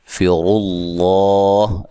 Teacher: لفظ اللہ کو موٹا ادا کریں اور را کو بھی موٹا ادا کرنا ہے